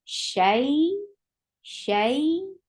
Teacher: Yes, ya sakina followed by fatha. You have to give a nice time on fatha and join it with ya. You will give it two counts long time. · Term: Yaili